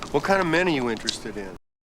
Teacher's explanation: Okay, so the strongest syllable here is men. This is the most important word because it's new.